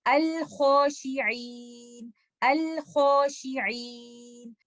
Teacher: آپ سن سکتے ہیں کہ دونوں صورتوں میں آپ کو لام ساکنہ کلیئرلی سنائی دے رہا ہے